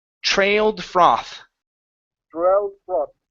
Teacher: instead of saying froth, this is an ah sound